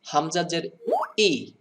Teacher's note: এটাকে যদি ইয়াজের ই, ইয়াজের ই এরকম বলেন তাহলে হামজার মতো হয়ে গেল, কিন্তু এটাকে বলতে হবে হামজাজের ই সাডেনলি, মানে হঠাৎ করে উচ্চারণ করতে হবে। ই একটা টক্করের মতো সাউন্ড আনতে হবে।